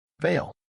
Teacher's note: V sound, teeth touch lower lip.